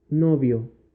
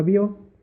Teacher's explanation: la unión de una vocal cerrada que viene a ser la y más la unión de una vocal abierta que viene a ser la o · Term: diptongo